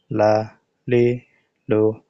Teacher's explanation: জিহ্বার আগার কিনারা সামনের উপরের দাঁতের মাড়ির সঙ্গে লাগাইয়া একটি হরফ উচ্চারিত হয়, সেটি হলো লাম